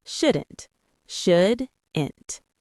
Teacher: Two syllables with stress on the first part.